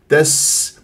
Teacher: السين صفير يجري فيها الصوت والنفس